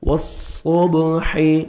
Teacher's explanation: با حروف قلقلہ میں سے ہے جو 5 لیٹرز ہیں، قاف طا با جیم دال، تو با ڈبل ساؤنڈ آئے گا